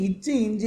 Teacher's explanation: நாவின் நடு அன்னத்தின் இடை